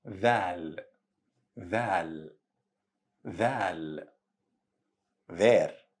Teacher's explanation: Thal is a voiced sound, as in TH in the English word there